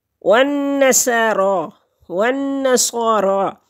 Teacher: را کے اوپر کھڑی زبر ہے، ایک حرکت کے برابر اس کو لمبا کریں گے